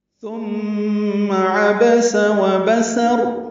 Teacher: سین دونوں میں سیٹی کی صفیر کی آواز سے ادا ہوگا